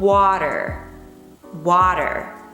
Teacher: substituting t with a short soft d sound is one of the most prominent features of north american english